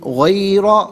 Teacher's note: غیر میں را پر زبر ہے، را کو پر کر کے پڑھیں گے